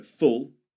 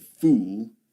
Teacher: So full short sound and fool the long sound.